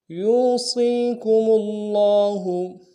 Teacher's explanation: صاد کو یا کے ساتھ ملائیں گے، یہ مدہ ہے، صاد کو موٹا ادا کریں گے، اس کو بھی ایک الف دال میں کھینچیں گے۔